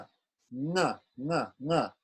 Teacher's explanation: So we have the guttural nasal